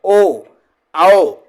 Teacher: कंठ और होठ दोनों का उपयोग हो रहा है ओ औ, गोल भी हो रहा है